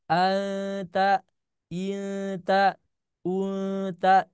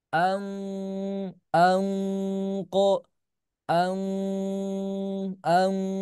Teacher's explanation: Anta Inta unta itu tipis tapi kalau tebal misalkan Ang anqo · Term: ikhfa